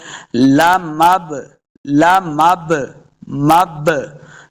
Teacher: 5، قاف، طا، با، جیم، دال، تو ان میں سے با آ گیا، با ساکن ہے، تو ہم نے اب اس کو خوب جو ہے نا جنبش دے کے، حرکت دے کے پڑھنی ہے تاکہ قلقلہ ہو جائے